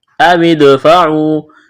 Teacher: دال ساکن ہے، قلقلہ کریں گے دال پر